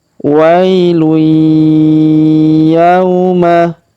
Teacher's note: huruf ya kita ayun sekali karena waw sukun depannya